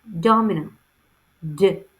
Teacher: The bold D represents the voice alveolar stop phoneme, D.